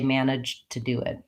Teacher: we make a stop D, we don't release the air, and we just release it right into the T of to.